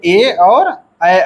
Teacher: इन वर्णों का उच्चारण कंठ और ताल दोनों स्थानों से होता है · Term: कंठ तालव्य वर्ण